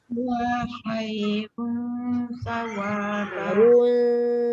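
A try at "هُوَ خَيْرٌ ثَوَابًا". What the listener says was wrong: Tengok mulut saya. Dia tak boleh kalau sebut dengan muncung kekal dia akan jadi gini huwa khairun sawa. Dia jadi tebal dekat tanwin tu, dia jadi penuh, dia mengulum. Sebab dia nak meringankan bunyi dia. Huwa khairun sa. Bagi dia nipis.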